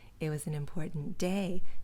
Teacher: in phrases like these day gets the stress